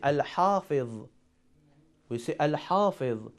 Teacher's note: Letter Ha is one of the Qamari letters because we pronounce letter Lam.